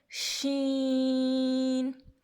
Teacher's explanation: شین کا مخرج کیا ہے؟ وسط زبان اور اوپر کا تالو. وسط زبان میں زبان کا درمیان والا حصہ اور اوپر کا تالو.